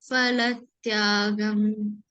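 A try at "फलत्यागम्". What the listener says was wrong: In Sanskrit, there is no fa is there. Only in English, only in the Hindi, it will be fa. Okay, but in Sanskrit, there is no fa. We have to say pa, pha, pa. Okay, Phalatyagam.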